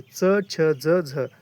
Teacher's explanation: उच्चारण के बाद वाला भाग संघर्षी हो जाता है। ये स्पर्श संघर्षी कहलाते हैं।